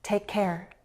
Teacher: Is present in both words. So when I link them, it sounds like one long C sound. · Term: one long k sound